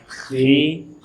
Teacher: ketika berharokat kasrah dia dibaca dengan tarqiq, dibaca dengan tipis. Disebut dalam istilah tadi tafkhim nisbi namanya.